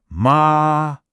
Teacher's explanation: Hear that? It's high. It's flat. like you're holding a single musical note. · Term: the first tone